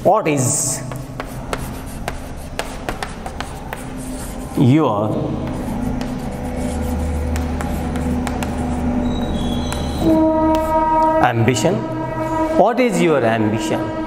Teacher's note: when it has a falling tone, it will indicate just casual asking